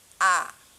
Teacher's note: উচ্চ স্বরধ্বনি হচ্ছে জিভ উপরের দিকে থাকে, আর নিম্ন স্বরধ্বনি হচ্ছে জিভ সবচেয়ে নিচে থাকে।